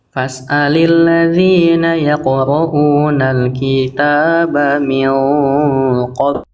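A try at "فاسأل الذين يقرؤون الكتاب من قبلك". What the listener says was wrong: Kinya kurang kepanjangan sedikit. Ya, harusnya satu harokat. Ya, banyak jelaskannya bukan min qabl ya, min qablik ya.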